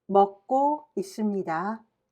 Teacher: 기역 in the lower consonant and the 기역 in the second syllable creates a thick and heavy sound.